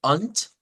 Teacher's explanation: con un sonido de T al final y no de D